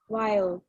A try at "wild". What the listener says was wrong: Okay, so pronounce the D on the end, okay? Wild.